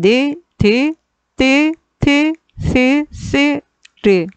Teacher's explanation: 혀끝과 윗잇몸 사이에서 나는 잇몸 소리